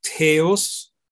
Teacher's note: So in Greek, at some point, these S sounds between two vowels disappear.